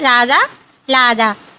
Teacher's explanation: రా ఉండవలసిన ప్లేస్లో లా పలుకుతున్నారు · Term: రకారముకు బదులు లకారమును